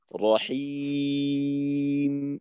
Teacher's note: শেষে তো আউজুবিল্লাহর সময়ও শেষে জি মিম তো মিম তাওয়াসুদ আওয়াজ যেন মিমের মাখরাজে যাওয়ার সাথে সাথে বন্ধ হয়ে না যায় যেমন এইখানে রহিম মিমের উচ্চারণটাকে একটু ধরে রাখা এক হরকত পরিমাণ সময় ধরে রাখা · মিমের উচ্চারণটাকে একটু ধরে রাখা, এক হরকত পরিমাণ সময় ধরে রাখা। তো যাওয়ার সাথে সাথে যদি উচ্চারণ শেষ করে দেই তখন কিন্তু মিমের ওই তাওয়াসসুত সিফতটা আদায় হবে না। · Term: মিম তাওয়াসুত